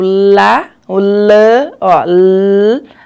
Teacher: E a gente tem também aquelas consoantes que o ar vai sair pela lateral da língua. Você falar o lá, o lã, ó, l, o ar vai sair pela lateral, e o lhã também, o arzinho sai pela lateral.